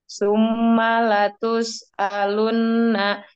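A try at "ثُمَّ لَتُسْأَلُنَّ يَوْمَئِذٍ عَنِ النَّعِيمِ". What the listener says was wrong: Jangan dipotong-potong. Jangan dipotong-potong teh. Jangan suma terus alunna. Ngalir aja terus.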